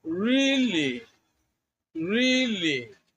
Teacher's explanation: In expressing surprise, you can use a combination of rising tone and a falling tone.